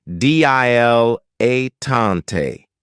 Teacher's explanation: stress on the first and last syllable